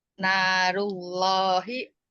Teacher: Narullahi, nanya dibaca 2 harokat. Matobi'i karena ada alif sebelumnya fathah, matobi'i alif dibaca 2 harokat. Rullahi, Rullahi adalah lafaz Allah dibaca tebal ya saja.